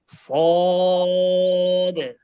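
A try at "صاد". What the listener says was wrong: এক ভাই এত দুর্বল করে আওয়াজ দিলে হয়নি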